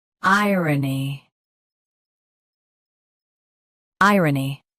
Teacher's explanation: Both US and UK have the same pronunciation of this word. Stress I. Keep R soft and N clear.